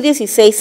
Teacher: 16 porque es una palabra polisilábica donde la mayor fuerza de voz está en la última sílaba.